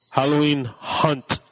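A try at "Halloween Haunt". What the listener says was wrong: H-A-U-N-T. Hunt. You're saying hunt. H-U-N-T is hunt.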